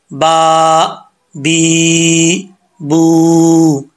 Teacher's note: बा का मखरज है ऊपर वाला होंठ और नीचे वाला होंठ, इन दोनों का तरी वाला हिस्सा मिलेगा तो बा पढ़ा जाएगा, ठीक है। बाज़ औक़ात लोग दोनों होंठ जो अंदर कर देते हैं, खुश्की वाले हिस्से से पढ़ते हैं, ऐसा नहीं होता, बा नहीं होता, वो फिर बा निकलता है।